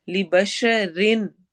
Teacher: نون کے آواز کو کلیئر پڑھنا ہے چونکہ حمزہ آ رہا ہے، اظہار ہو رہا ہے.